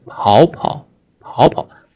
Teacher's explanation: 跑 is the third tone originally, third tone, and it changed to the second tone when it is used in reduplication verb forms.